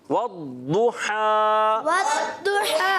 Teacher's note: ضاد کو پکڑنا بھی ہے, مشدد ہے